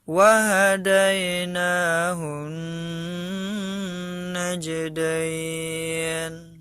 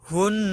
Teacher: Hun, nah ini gunnah ya, nun tasdid atau mim tasdid itu kalau bertemu harus digunakan, jadi harus digunnah atau didengungkan dikit, dengung sedikit ya